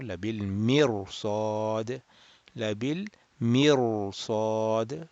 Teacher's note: Sad is the heavy letter that is making the raw mufakham or rounded.